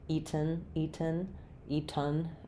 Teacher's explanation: with the E sound, unreleased T, and the N sound, no other sound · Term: syllabic N